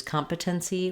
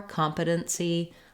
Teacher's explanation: competency with that flap and that stopped T and the syllabic N